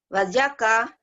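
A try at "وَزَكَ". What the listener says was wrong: Wazaka. Zai. Wazaka. Iya.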